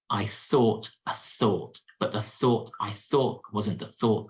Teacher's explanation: you've got that unvoiced th sound the air between the teeth and tongue